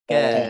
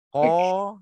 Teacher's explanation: untuk kita nak bezakan antara kaf dengan qaf, ka kita lebar, qa kita muncung.